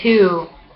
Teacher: U, dot, dot, high, back, rounded, tense, like in two